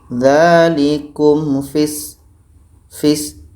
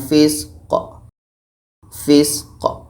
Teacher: Qati di akhir itu hukumnya qalqalah. Qalqalah kubra.